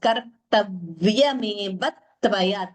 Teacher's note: This is also doubling here. Usually when we have these samyukta aksharas like this, the dvitvam is heard very, very clearly and distinctly.